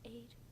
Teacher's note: The ayin is silent, right? So the ayin is silent, and so we just have the vowel and the consonant.